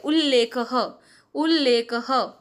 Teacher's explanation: त हट गया उसकी जगह आधा ल आ गया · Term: लत्व संधि